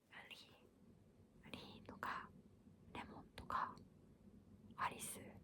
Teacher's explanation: because Japanese doesn't have an L, you use this R sound to make an L sound